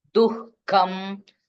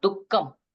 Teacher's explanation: It should be recited with little more stress. Then, this visarga followed by ka, what happened? You have to put one H sound.